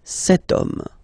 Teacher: as in French, H is not pronounced, so the first sound that we hear is O